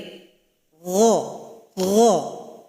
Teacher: Jadi keluar dari tenggorokan paling atas. Kemudian huruf ghain ini suara kita juga harus dinaikkan ke langit-langit.